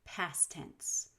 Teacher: past tense of course has three consonants in a row where we can remove the t after an s